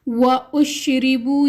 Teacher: وَأُشْرِبُوا، یہاں پر شین سختی والے حروف میں سے ہے، را کے نیچے زیر ہے تو ہم را کو باریک پڑھیں گے